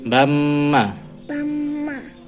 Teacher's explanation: untuk mim di tasydid didengungkan